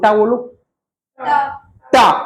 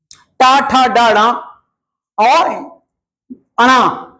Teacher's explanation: तो जीभ जब कठोर वाले भाग से टकराकर वर्णों का उच्चारण करे तो उसको क्या कहेंगे? टा वर्ग, मतलब मूर्धन्य।